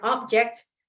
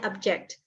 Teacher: kalau object tadi penekanan pada suku kata pertama. Tapi pada object penekanan pada suku kata kedua.